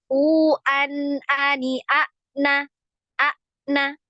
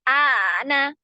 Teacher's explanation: huruf hamzah ini ketika disukun maka suaranya tertahan jadi langsung ya tertutup pita suaranya langsung tertutup u an a na a na Ya seperti itu tertutup jadi